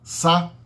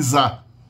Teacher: O som da letra S, sá, é menos sonoro que zá.